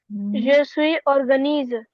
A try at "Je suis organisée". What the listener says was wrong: Organisée. You see here the accent aigu. Accent aigu, it's pronounced. So, organisée.